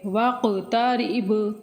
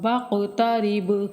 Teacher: واقترب ادھر قاف اور با دونوں پہ کلکلہ ہوگا